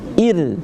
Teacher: kalau misal seandainya alif itu barisnya adalah i, maka dibaca ir, tipis